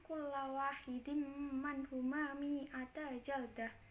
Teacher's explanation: idgham bi gunnah sebab tanwin bertemu huruf mim